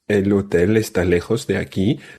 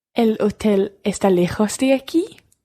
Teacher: it's just like saying the statement, el hotel está lejos de aquí, but then raising your voice at the end.